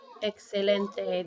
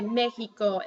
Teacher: the ex is gonna sometime sound like KS and sometimes like an H